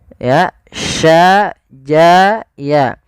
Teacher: Kita sesuaikan makhraj daripada huruf shin. Makhrajnya adalah tengah lidah kita. Ja, sya, ya itu tengah lidah.